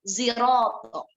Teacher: Ismamnya di sini penggabungan antara dua huruf, yakni huruf zai dan huruf sod. Makanya ketika lafadz siroto dibaca dengan ismam, maka seperti ada suara zainya, karena memang itu penggabungan antara zai dan sod, maka dibaca ziroto.